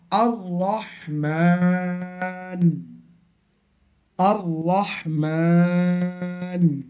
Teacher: তাশদি আছে র মুশাদ্দাদ আছে কিন্তু র এর উপরে জবার আছে র জবার থাকার ফলে র টা পুর হবে পুর মানে মোটা হবে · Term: র পুর